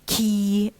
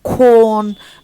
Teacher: Let's say corn, and how it's said with the back of the tongue being retracted to touch the soft palate, as you see. So the tongue is moving forward and backward. It is advanced and retracted in order to accommodate the following vowel. It's front in order to accommodate the vowel in E in key فبيطلع قدام, and it is back in order to accommodate the vowel O in corn فبيرجع تاني لورا.